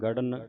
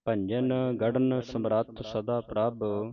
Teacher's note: ਇਹਨੂੰ ਭਾਰਾ ਬੋਲਣਾ ਰਾੜੇ ਦੇ ਥੱਲੇ ਹਾਹਾ ਲੱਗੈ ਭਾਰਾ ਉਚਾਰਨ ਕਰਨਾ